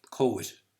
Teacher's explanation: And that derives from, that's a natural production of the movement of the tongue from what is either a back position having to move to a front position with no break in sound in between. So of course you hear that movement. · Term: the glide